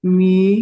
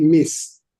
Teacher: the S sound drops out. And in linguistic compensation, the vowel sound gets longer.